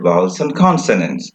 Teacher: So, vowels and consonants, I have slurred over and. I did not say vowels and consonants.